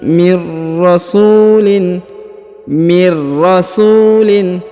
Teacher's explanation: huruf nun sukun bertemu dengan ro, maka nun sukunnya menghilang melebur ke huruf ro ya. Mir langsung dibaca mir rasulin ya, langsung sambung masuk ke huruf ro, dan nun sukunnya langsung melebur menghilang ke huruf ro ya.